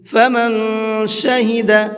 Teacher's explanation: اس نون کے اندر بھی اخفا کریں گے، اس لیے کہ نون ساکن کے بعد میں شین ہے۔